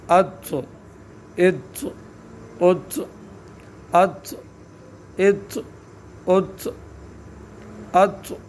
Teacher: طا کو ساکن کرنے کی صورت میں اط قلقلہ ہوگا، مخرج کو حرکت دینا ہے.